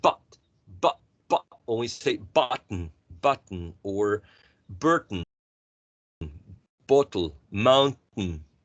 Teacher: When you say but, or when you say button, or Burton, bottle, mountain, the air is stopped, right? In the glottis.